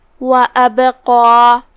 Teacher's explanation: پھر حرف القاف ہے، یہاں جو کہ قاف حروف تفخیم میں سے ہے اور اس کے بعد مد الف ہے، تو ہم قاف کو اور اس کے بعد مد کو دونوں کو تفخیم سے ادا کریں گے